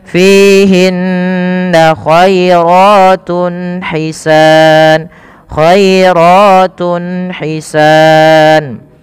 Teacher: Maka teman-teman, apabila kita dapati dalam bacaan Al-Qur'an kita ada dhammatain atau ada tanwin an, in, un atau nun sukun bertemu dengan huruf izhar halqi, yaitu salah satunya ha kecil, maka harus dibaca dengan jelas suara tunnya